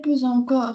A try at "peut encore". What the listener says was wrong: Peut encore, c'est pas peut encore. Quoi la liaison? Peut encore.